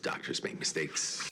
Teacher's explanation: He hangs on to that S sound, which is something that certain American speakers that I've interacted with might do that if they're trying to convey a specific mood.